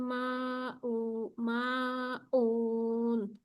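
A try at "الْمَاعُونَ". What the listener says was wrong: মাউন। আইন উচ্চারণটা হচ্ছে না আপু। ওয়ায়ামনাউনাল মাউন। আপু আইন উচ্চারণটা আরো সুন্দর করতে হবে।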